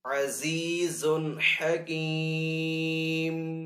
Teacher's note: وقف کرنے کی صورت میں یہاں پہ میم کو ساکن کر دیں گے